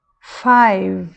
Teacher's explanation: esse e não é uma sílaba aqui não existe um som vogal aqui depois do v a palavra acaba no V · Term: Magic e